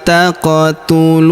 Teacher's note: Huruf qof berharakat sukun. Kita pantulkan. atau kita qalqalahkan. Taquluna huruf lu kita panjangkan dua harakat karena wau sukun di depannya.